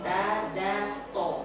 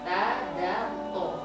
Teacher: itu ujung lidah ke gigi seri atas. Oke, gigi seri atas da.